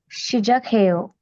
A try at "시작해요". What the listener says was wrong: Yeah, 시작해요.